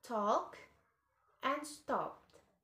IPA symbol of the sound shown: t